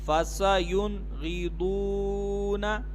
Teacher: اب اس میں بھی غنہ نہیں کریں گے, نون ساکن کے بعد غین آ رہا ہے حروف حلقی میں سے, تو یہاں پر اظہار ہوگا, غنہ نہیں کریں گے